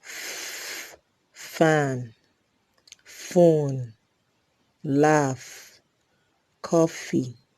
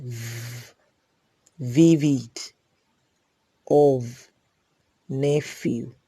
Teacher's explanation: there is the Labio-dental Fricatives, f and v.